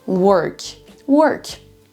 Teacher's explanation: on n'entend pas du tout un O, mais quasiment un E.